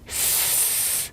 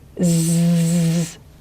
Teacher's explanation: The voiceless one, s, you won't feel much, and z, z. The voiced one, it'll be like a buzzing in your head